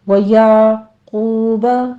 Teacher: عین کو وسط حلق میں لے جا کے سٹاپ کیجئے، قاف کو پر پڑھتے ہوئے واو مدہ ادا کرنی ہے